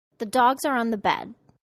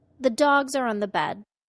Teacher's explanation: The stressed content words were dogs and bed, nouns.